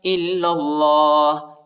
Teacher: حمزہ کو لام کے ساتھ ملائیں گے اور لام کو دوسرے لام کے ساتھ ملائیں گے، الف نہیں پڑھا جاتا، ٹھیک ہے، نہ یہ پہلا والا الف پڑھا جاتا ہے نہ یہ دوسرا والا الف، ٹھیک ہے.